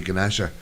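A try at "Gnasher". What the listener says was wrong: It's a silent G. silent G, isn't it?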